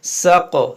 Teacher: ये क़ाफ में क़लक़ला करेंगे